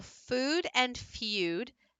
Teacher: they're both High they're both toward the back and they are both tense